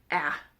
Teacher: so you would think it's an a sound but it is much further back in the throat